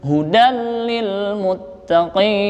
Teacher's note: Itu namanya idgham bila gunnah. Artinya tanpa mendengung bacanya.